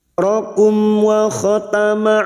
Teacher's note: Mim sukun bertemu wawu, idhar safawi. Mim sukun dibaca jelas tanpa mendengung